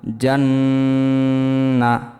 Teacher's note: জিম নুন জবর জান গুণা হবে, ওয়াজিব গুণা।